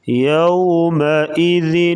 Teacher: یوم کی واو جو ہے لین ہے, اسے نرمی کے ساتھ ادا کریں گے